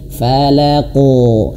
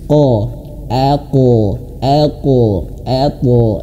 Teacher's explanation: huruf dua yang tebal ini th dan qof itu pantulannya harus ketebal. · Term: qalqalah